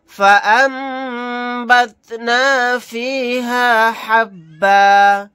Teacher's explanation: यहाँ पर नून साकिन के बाद बा आ गया तो हमजा के साथ मीम को मिलाकर गुन्ना के साथ पढ़ेंगे, नून साइलेंट हो जाएगा।